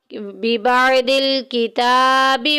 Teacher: افاتؤمنون ببعض الکتاب. کتاب کے اوپر دیکھیں کھڑی زبر آگی ایک الف کے برابر لمبا کریں گے